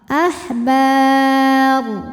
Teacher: ketika kita berhenti rnya dibunyikan secara tafkhim Kenapa karena rnya dimatikan huruf sebelumnya huruf mati Alif dan huruf